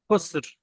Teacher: শেষে র সাকিন হয়ে যাবে, তবে র চার ভাগের এক ভাগ আদায় হবে, তিন ভাগের এক ভাগ আদায় হবে।